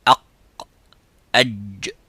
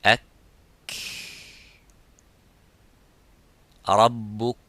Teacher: the middle part touches the roof of the mouth, and the sound stops as exactly as the qaf